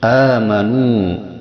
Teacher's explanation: madnya disebut mad badal yang panjangnya 2 harokat sebagaimana mad tabi'i